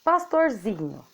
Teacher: A gente já sabe que paroxítona é aquela palavra que tem a penúltima sílaba tônica, ou seja, a penúltima sílaba dela é dita com mais força, com maior intensidade, então ela aparece mais na palavra. · A sílaba que aparece mais é o zi, pastorzinho.